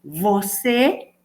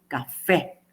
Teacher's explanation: en los dos casos tengo estas sílabas tónicas, pero la una es más cerrada y la otra es más abierta.